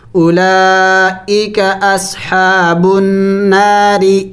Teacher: را کو باریک پڑھیں گے را کے نیچے زیر ہے